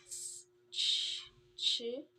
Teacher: voiceless post-alveolar affricate